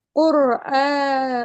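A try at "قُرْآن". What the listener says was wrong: Tidak kur, tapi quru. Tebel.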